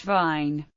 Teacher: V, voiced labiodental fricative, as in English vine